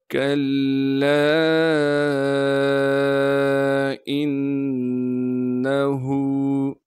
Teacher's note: کلا انہ، کاف کو باریک کر کے پڑھیں گے اور کاف کو آگے لام سے ملائیں گے کیونکہ لام پر تشدید ہے۔ تشدید ہونے کی وجہ سے لام میں تھوڑا سا ٹھہراؤ رکھیں گے۔